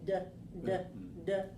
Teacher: the vocal chords are vibrating when we say d d d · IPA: /d/